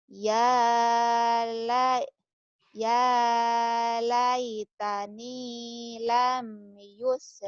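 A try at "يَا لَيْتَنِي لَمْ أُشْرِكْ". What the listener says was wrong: Usyrik. Bukan yus, usyrik. Ya laitani lam usyrik.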